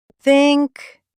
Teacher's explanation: Your tongue just peeks between your teeth like it's shy. Just a little peek, like this. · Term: soft TH